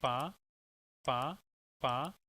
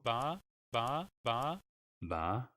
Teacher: you can just see the difference of the vowel duration just as a difference between pa and ba, that how is the vowel influenced by the voicing feature